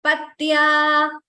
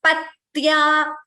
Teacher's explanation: note the difference, that T is doubling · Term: Dvitvam